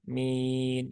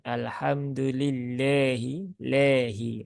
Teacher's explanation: Nah, di situ kan harokatnya kasroh, ya, ya sukun, setelah kasroh bertemu dengan nun yang disukunkan, maka arid disukun. Nah, dan karena kasroh berarti dia vokalnya i, ya, bukan e